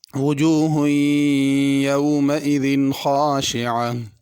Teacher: یومئذ میں ذال ہے، اس کو زا نہ پڑھا جائے